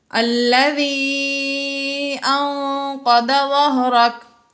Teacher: نون ساکن کے بعد قوف آ گیا حروف اخفا میں سے، اس لیے یہاں پر ہم نے غنہ کر کے پڑھا